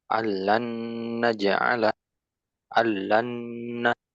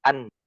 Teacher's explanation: dileburkan seutuhnya huruf nun matinya atau tanwinnya ke huruf lam atau ro tanpa adanya ghunah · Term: idgham Kamil